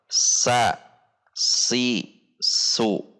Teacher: Perhatikan di sini pangkal lidah rileks atau posisi turun atau di bawah, sehingga suara huruf tidak tebal. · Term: al-istifal